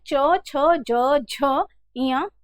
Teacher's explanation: आपकी जो जीभ है वो तालू को स्पर्श कर रही है दांत के ठीक पीछे वहां पर स्पर्श कर रही है